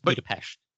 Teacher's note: And S is pronounced like SH, so it's Budapest.